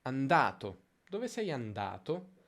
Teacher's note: La sillaba da di andato si allunga. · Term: accento di frase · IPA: [anˈda:to]